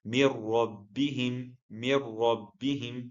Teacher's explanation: No nasal sound and no noon pronounced. This is the idgham without ghunna.